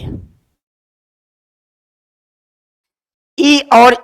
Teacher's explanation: ई और ई बोलते समय आपकी जीभ कंठ से थोड़ा ऊपर लगती है तो उसे कहते हैं तालु या तालव्य